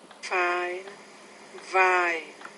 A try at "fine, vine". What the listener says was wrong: Okay, you got to be careful your initial sound there. Fine, vine, vine, vine.